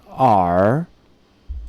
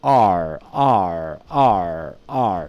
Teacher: And then the tongue, it just goes very close. It's approximating the location, but it's not touching anything. It's close to the alveolar, but it's not touching it. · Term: approximant